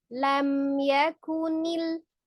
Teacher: Karena secara sifat huruf mim itu memiliki sifat gunnah ya. Makhrajnya dengan bertemunya dua bibir. Jadi sempurna ya, diketemukan kedua bibirnya tetapi dengan tidak ditahan. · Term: mim sukun